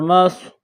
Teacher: اگلا حرف دیکھیے، میم صاد زبر مص، صاد کے اوپر جزم کا نشان ہے تو میم اور صاد کو آپس میں ملائیں گے، صاد کو موٹا پڑھیں گے